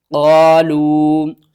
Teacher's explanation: چھوٹی مد ہے، مد منفصل ہے، تین الف کے برابر کھینچ کر پڑھیں گے۔